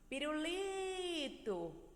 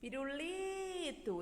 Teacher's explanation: a sílaba mais forte da palavra pirulito, que é a sílaba tônica, é o li